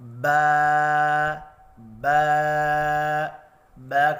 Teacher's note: ہونٹوں کو اوپر کی طرف تھوڑا سا کھینچ کر پڑھتے ہیں تو کھڑی زبر کی آواز نکلتی ہے، اور اس کی آواز کا رخ اوپر کی طرف ہوتا ہے، جیسا کہ با با با کھڑی زبر با، یا با کھڑا زبر با۔